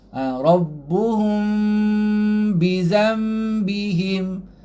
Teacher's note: Rapat mulut tapi ringan dengungnya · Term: Iklab